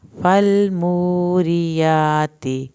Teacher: والعادیات ضبحا، فالموریات، لام کو نہیں ہلانا، واو ساکن کو کھینچیں ایک الف کے برابر